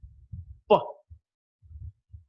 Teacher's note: there is a total closure of the lips and there's a sudden release · So air is built up inside the mouth. There's a total closure of the lips, and there's a sudden release. Pa. So the three-term label will be pa is a voiceless, bilabial, plosive.